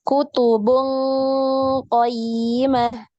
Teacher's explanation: ketika ikhfa yang tafkhim, ini naik pangkal lidah